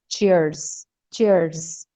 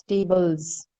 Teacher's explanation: So this S is then pronounced as Z sound.